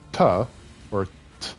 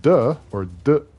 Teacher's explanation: If you pronounce T or T, it doesn't engage your vocal cords. But the softer version of it, D or D, does engage your vocal cords.